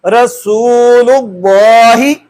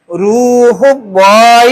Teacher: اس میں اللہ کا لام اس سے قبل اگر زبر اور پیش آ جائے تو اس کو پر کر کے پڑھنا ہے، موٹا کر کے پڑھنا ہے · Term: تفخیم